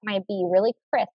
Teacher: I kept my B really crisp. I didn't add a schwa sound like B. I kept it really crisp.